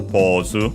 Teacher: it's accented just like in English, so on the first syllable